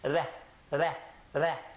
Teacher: But it's an R sound that we produce on the front of our mouth, not in the back.